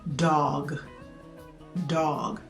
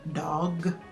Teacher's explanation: when you pronounce the D D it kind of flicks the back of your upper teeth in the alveolar Ridge